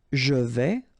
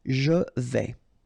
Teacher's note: Je vais, final S not pronounced here, and remember when you combine this A and E together you get the sound E, so really open. Je vais.